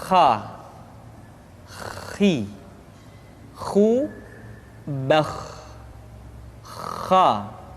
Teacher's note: Atau lebih praktisnya, pengucapan huruf kha persis terdengar seperti orang yang tidur dalam keadaan mengorok.